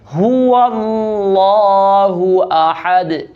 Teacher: بعض لوگ یہاں غلطی یہ کرتے ہیں کہ اسم اللہ کلام پر کرتے ہوئے ہا بھی موٹا کر دیتے، هو اللہ احد، ہا کو موٹا ادا نہیں کرنا، اس کو نارمل ہی ادا کرنا ہے